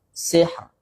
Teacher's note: tipis karena didahului baris kasrah jadi bacanya tipis kecuali kalau sambung.